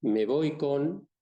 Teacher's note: Entonces, si yo digo, me voy con, la O de pronto está nasalizada